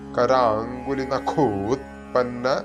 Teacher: നഖോ എന്ന് നീട്ടി കഴിഞ്ഞാൽ ഉത്പന്ന എന്ന് കറക്റ്റ് ആയിട്ട് വരും